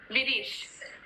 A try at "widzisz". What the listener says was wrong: The W is like V. And the rest, like, you can say whatever, just the first letter is the most important one. But it's Widzisz.